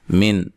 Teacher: نون ساکن کا اظہار ہے, غنہ نہیں کریں گے